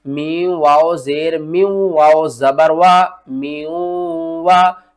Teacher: मीम वाओ जेर मीम, यहाँ पर हम करेंगे इदगाम माल गुन्ना, यानी कि इदगाम करेंगे गुन्ने के साथ, मीम को वाओ के साथ मुदगम करेंगे और साथ में गुन्ना भी करेंगे